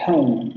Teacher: empieza en el sonido medio central no labializado y termina en el sonido central posterior medio cerrado labializado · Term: diptongo